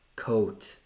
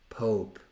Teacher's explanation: non è semplicemente O, è tipo O con quella coda che segue. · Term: The O in English